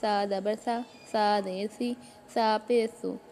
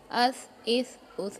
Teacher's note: इसमें सीटी की आवाज़ नहीं निकलनी चाहिए बिल्कुल भी, बिल्कुल हल्का पढ़ना है। इसको आपने ऐसे नहीं पढ़ना कि कोई सा को सीन जैसी आवाज़ बनाए, इस तरीके से नहीं पढ़ना है।